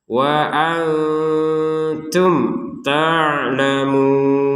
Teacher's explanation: mim sukun bertemu ta dibaca dengan jelas